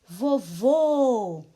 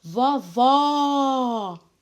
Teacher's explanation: na outra palavra com acento agudo vovó o som aberto então acento circunflexo o som fechado acento agudo são abertos